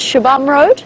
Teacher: in the local languages the X sound is a sh sound